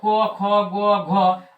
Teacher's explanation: इस सब का उच्चारण कंठ से होता है